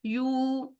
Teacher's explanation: यहाँ पर हम करेंगे 2 काउंट्स के लिए लंबा, क्योंकि यहाँ पर हो रहा है वाव मद्दा।